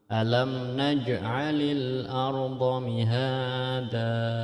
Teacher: Karena itu huruf qalqalah maka wajib dibaca memantul.